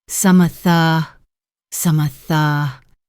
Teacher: Instead of saying 3 separate words, some of the, she connects them and reduces the vowel sounds. It sounds more like some-a-tha, some-a-tha.